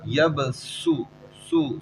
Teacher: سیٹی کی آواز آ رہی ہے، حروف صفیری ہے یہ، سواد سین زا، تینوں صفیری ہیں، سیٹی والے حروف، صفیری سیٹی والے حروف کو کہتے ہیں.